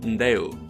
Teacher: formed with the short stem ndeu, with a prenasalized stop